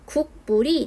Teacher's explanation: 뒤에 있는 미음의 영향을 받아서 앞에 있는 기역이 이응으로 교체됩니다 그래서 최종 발음이 국물이 되는 비음화 뒤에 있는 미음의 영향을 받아서